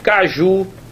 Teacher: a sílaba tônica é a última a sílaba tônica é a última mas não tem acento a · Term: oxítona